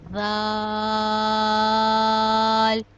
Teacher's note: جب زبان کی نوک اوپر والے 2 دانتوں کی نوک سے لگے گی تو ذال اور ثا ادا ہوگا۔ ذال کو بھی ہم 5 الف کے برابر لمبا کرتے ہیں۔